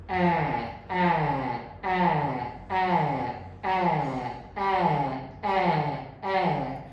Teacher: Open sound English में बड़ी mouth opening के साथ प्रोड्यूस की जाती है। और फ्रंट का मतलब है कि मेरा फ्रंट पार्ट है जो टंग का, वो आगे रहेगा, पीछे नहीं जाएगी, जीभ मेरी पीछे नहीं जाएगी।